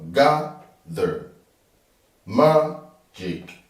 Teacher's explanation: for all these words, the stress is on the first syllable.